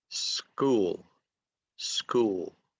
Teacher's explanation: And then you get the initial letter S, is unvoiced, and then you get the unvoiced K sound. And so you have to put S, K together to say school, school.